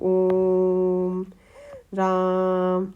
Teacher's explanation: पुलुत स्वर जिसमें दीर्घ स्वर से भी ज्यादा टाइम लगता है। जैसे कि हम लिखते हैं ना ओम बोलते हैं जब ओम राम तो उनको पुलुत स्वर बोलते हैं।